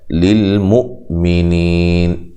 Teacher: حمزہ کو جھٹکے سے ادا کرنا ہے. نی یا مدہ ہے، وقف کی صورت میں مد کر سکتے ہیں.